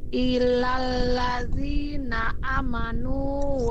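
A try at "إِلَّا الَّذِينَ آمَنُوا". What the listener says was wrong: Amanu. A-nya dibaca panjang. Ya, di sini ada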